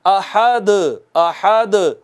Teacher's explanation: دال ساکن آئی اور کلمہ کے اینڈ پر آئی، تو اس پر ذرا بڑا قلقلہ کرتے ہیں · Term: قلقلہ کبریٰ